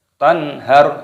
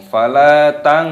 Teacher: nun sukun bertemu dengan ha, hukumnya dibaca idhar halqi. Cara membacanya dibaca jelas. Tanhar, tidak boleh berdengung.